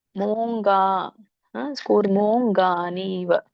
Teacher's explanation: ಇಲ್ಲಿ ಮೋ ಇರೋದ್ರಿಂದ, ದೀರ್ಘ ಇರೋದ್ರಿಂದ ನೀವು ಎಳಿಬೇಕು.